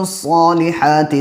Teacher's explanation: صاد کو پر پڑھیں گے، اس کے ساتھ ساتھ الف بھی پر ہو جائے گا۔